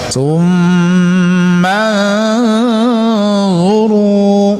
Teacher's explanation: Itu wajibul gunnah, artinya dibaca wajib berdengung. Ya, dengungnya sekitar 2 harokat ya.